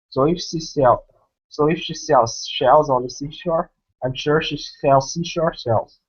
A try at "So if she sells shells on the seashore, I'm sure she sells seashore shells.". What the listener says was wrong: Excellent. You made one mistake, but you self-corrected, so I don't consider there to be any pronunciation errors. Great job.